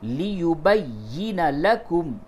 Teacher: یہ با کو یا سے ملائیے تھوڑا سختی کے ساتھ، کیونکہ تشدید کے معنی ہوتے ہیں شدت اور سختی کے، تو جس حرف پہ تشدید ہو اس کو سختی اور شدت کے ساتھ پہلے والے حرف سے ملائیں گے۔